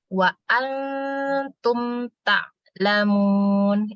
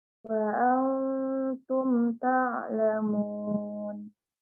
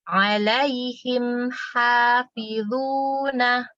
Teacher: mim sukun tidak bertemu ba, berarti dia hukumnya idhar syafawi, dibaca jelas.